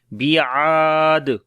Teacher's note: دال کے اوپر قلقلہ ہوگا. بیعاد، جو کہ تھوڑا سٹرونگ قلقلہ ہوگا